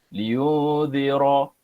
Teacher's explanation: Bila sebut ra', kita jangan muncungkan mulut Kita cuma tebalkan je. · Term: Ra' tebal